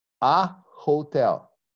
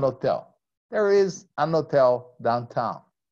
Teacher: So if you ever go to any country, like a certain place in Ireland or Scotland, and you listen to somebody, a native speaker of English, saying an hotel, it's okay because he doesn't pronounce the H